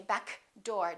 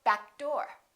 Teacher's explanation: For example, if I say back door, we're not going to say back door. Don't release that k. Just go back door.